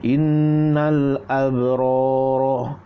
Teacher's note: ra panjangkan, panjangkan ra, abra jadi mad asli 2 harakat